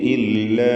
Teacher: ഇല്ല എന്നതിൽ അലിഫിൻ്റെ ദീർഘം മദ് മുൻഫസിൽ ജായിസാണ്. 4 or 5 ഹറക്കത്തിൻ്റെ അളവിൽ അവിടെ ദീർഘം നൽകേണ്ടതാണ്.